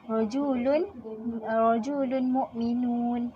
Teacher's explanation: Huruf mim yang bersabdu akan dibaca secara dengung dan dua harakat. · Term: idgham ma'al gunnah